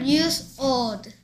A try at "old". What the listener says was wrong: 또 old래. L이 계속 발음 안 내. 혀가 old. 혀 움직이 귀찮지.